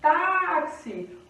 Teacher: O tá é a sílaba forte